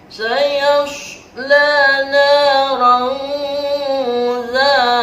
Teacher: Dibacanya tidak boleh jelas karena ikhfa, harus samar-samar, ada dengungan sedikit. Sayasla naran za, zanya mad tabi'i karena ada huruf alif.